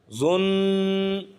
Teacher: ایک الف کے برابر ناک میں آواز کو دبا کر رکھیں گے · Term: غنہ